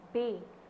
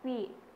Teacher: The P of pay and B of bay are pronounced nearly identically. They differ only in the vocal cords vibrate for B but not for P. This difference is called voicing.